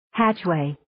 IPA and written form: 'hætʃ,weɪ (Hatchway)